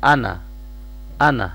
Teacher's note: جب بھی قرآن پاک میں یہ لفظ آئے گا تو آپ نے اس کو نون فتحہ ہی پڑھنا ہے، اس کو شارٹ پڑھنا ہے انا انا، اس کو انا نہیں پڑھنا، ٹھیک ہے؟